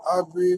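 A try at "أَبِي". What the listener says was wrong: আবি টান হবে,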